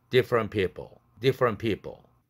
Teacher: different people도 t가 날아가야 되죠. different 할 때 C2에 해당되니까.